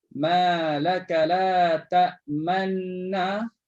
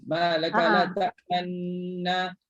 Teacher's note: Walaupun dia dah idgham, dia tak idghamkan sepenuhnya, tapi dia ada buat bacaan dengan ismam, muncungkan kedua bibir mulut.